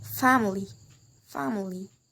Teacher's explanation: the stress is put in the first syllable